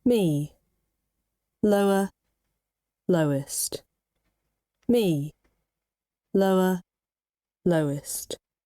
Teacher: now for falling intonation when your voice goes lower